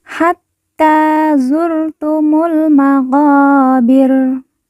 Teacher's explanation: mu langsung masuk huruf lam alif tidak dibaca Hatta zurtumul maqabir lalu qo kita baca panjang dua harakat karena di depannya terdapat huruf alif yang merupakan tanda baca panjang